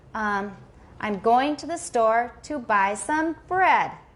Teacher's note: we'll have a bunch of stresses, but the final stress is the highest.